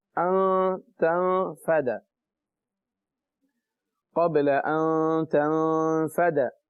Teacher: دیکھیں دو جگہ غنہ ہو رہا ہے, ان تنفد. نون ساکن کے بعد تا آ گیا, غنہ کریں گے. تا کے بعد نون آیا, وہ بھی ساکن ہے, اس کے بعد فا آ گیا, غنہ کریں گے.